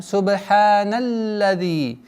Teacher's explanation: С огласовки фатха уходим на удвоение лям.